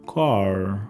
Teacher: la lengua viene arqueada y el aire no para mientras que pronuncia la palabra car